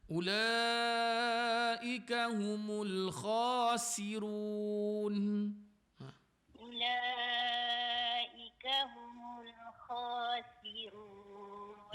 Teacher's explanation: dia suruh bunyi macam seolah-olah bunyi siul. Sirun macam bunyi angin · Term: huruf sin